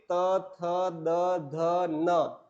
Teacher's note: चारों सभी के उच्चारण में क्या हुआ कि जीवा जो है वह दांतों से, हमारे दांतों से टकराई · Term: दंत्य